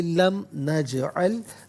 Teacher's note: جیم ساکن ہے لیکن حرف قلقلہ ہے تو آواز لوٹتی ہوئی محسوس ہونی چاہیے